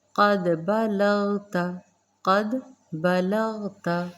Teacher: دال پر جزم قلقلہ کریں گے اور قاف کو پر پڑھیے گا